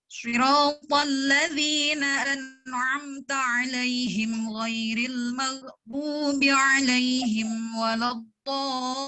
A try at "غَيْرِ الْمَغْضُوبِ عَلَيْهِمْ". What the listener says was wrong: عند غير المغضوب عليهم لا تقولي غير المغضوب، المغضوب بسرعة قوليها. أسرع من هذا، يعني غير المغضوب عليهم، غير المغضوب عليهم، المغضوب عليهم.